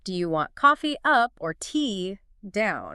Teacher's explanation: either or questions tend to rise on the first option and then fall on the second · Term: Rise then fall